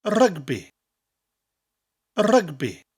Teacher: Rugby in English and Welsh are very similar, but the Welsh version has a rolling R, and you emphasise the syllables slightly more.